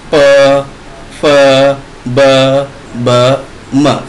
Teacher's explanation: और लास्ट हमारा प वर्ग बोलते समय हमारा जो हमारे ओठ होते हैं, जो हमारे लिप्स होते हैं, वो आपस में जो है मिलते हैं, तब ये जो है ये प वर्ग का उच्चारण होता है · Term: ओष्ठ